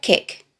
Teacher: it starts and ends with a hard guttural k sound and has a short sharp e vowel sound which suits the